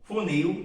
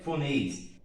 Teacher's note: Funil, terminação em IL, funis. Também é uma palavra oxítona, a sílaba tônica é a última.